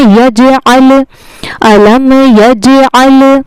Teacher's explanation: عین کا مخرج حلق کا درمیانی حصہ ہوتا ہے